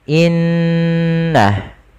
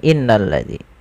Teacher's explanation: ditandai dengan adanya huruf nun yang berharakat tasydid cara membacanya yaitu menahan suara ghunahnya dan menahan suara nnya sepanjang dua harakat baru dilepaskan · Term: bacaan ghunah, bacaan gunnah